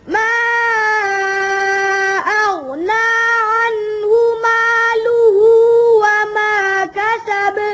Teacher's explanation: مالوہ ظاہر کر کے پڑھیں، اچھی طرح لام کی پیش ظاہر کریں